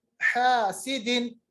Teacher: ये हा है, हा वस्ते अलग से अदा होता है।